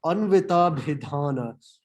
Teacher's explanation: There's two aspirated consonants here, the bha and the dha.